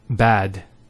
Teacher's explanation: in the first example bad it's the a sound that's been elongated and that's denoted by this vector here which has the a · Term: the long vowel